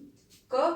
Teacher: यदि हम क का उच्चारण करते हैं या हम ख का उच्चारण करते हैं तो हमारी स्वर तंत्रियों में वो झनकार उत्पन्न नहीं होती है, या फिर कह सकते हैं कि कंपन नहीं होता है। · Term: अघोष